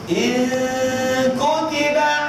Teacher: Jangan langsung masuk ke kaf, tak boleh. Dia ke hidung dulu.